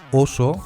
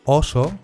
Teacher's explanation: Por ejemplo, oso con “o cerrada” es oso, mientras que ɔso con “o abierta” es hueso (se escribe con tilde para diferenciarla).